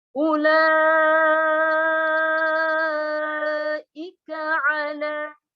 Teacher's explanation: bendera bertemu hamzah namanya mad wajib muttasil, panjangnya 6 harakat